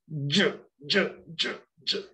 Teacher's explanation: With j, you're pushing your tongue against your teeth.